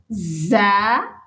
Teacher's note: زا سختی سے پڑھے جانے والا حرف ہے اور سیٹی والے حروف میں شامل ہوتا ہے۔